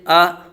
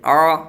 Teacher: हमजा की आवाज हलक के नीचे वाले हिस्से से आ और आन की आवाज हलक के दरमियान वाले हिस्से से